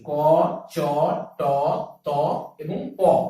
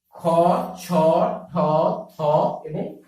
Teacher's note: প্রতিটি বর্গের প্রথম এবং দ্বিতীয় ধ্বনি উচ্চারণের সময় কম গাম্ভীর্যের সৃষ্টি হচ্ছে বলে একে বলা হচ্ছে অঘোষ ধ্বনি